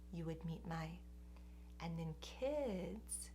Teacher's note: we're going really quickly and lightly over the first part, and the voice is relatively low. It's in the mid-range.